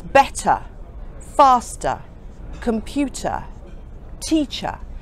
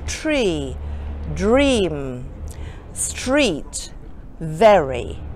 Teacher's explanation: over in England we do not pronounce the R when words finish with this letter